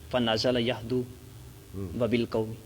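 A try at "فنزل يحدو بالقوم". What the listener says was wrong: یہدو بالقوم، یہدو کی وائے، یہدو بالقوم، لوگوں کو شعر سنانے لگے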